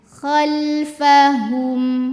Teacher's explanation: humnya hu monyong, ke mim sudah balik ke posisi biasa bibirnya.